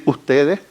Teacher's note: Valga señalar que en Chile está muy bien estudiada la ocurrencia de este fonema en la posición codal y que hay consenso en cuanto a que en esta posición la realización por lejos más frecuente es la aspiración glotal, como en mosca, pescado